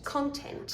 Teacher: did you know it's an e in the second syllable not a schwa